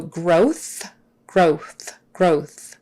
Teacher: that W before the th we're not going to make it too obvious with our lips